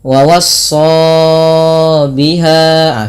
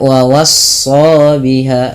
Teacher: yang dibaca hanya alifnya saja wa was dua harakat dan hati-hati jangan terlalu memperpanjangkan Mad thaii melebihi dari kadar dua harakat contoh wawha ah seperti itu itu terlalu panjang Cukup dua harakat